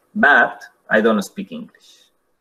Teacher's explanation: I was born in London viene con un tono que cae, un falling, pero en el momento de decir but, hacemos un rising tone, un fall rise